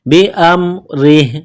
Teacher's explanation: रा के नीचे जर है रा को बारीक करना है